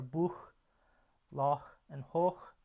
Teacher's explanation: So here we have a bunch of back and round vowels, plus a tense and a vowel and a long vowel, a long tense vowel for Buch and Hoch, but then we have the short lax vowel for Loch.